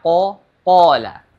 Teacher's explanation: Huruf qaf sama kaf sama makhrajnya, akan tetapi huruf qaf tidak memiliki hams di situ.